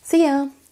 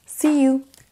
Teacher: On abrège souvent you en ya.